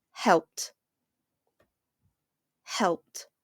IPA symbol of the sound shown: t